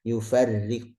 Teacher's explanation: Nah, di sini kata ro-nya tipis ya. Karena ro kasrah.